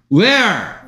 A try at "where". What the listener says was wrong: Where? 얼 소리 못 내요. 얼 소리. Where?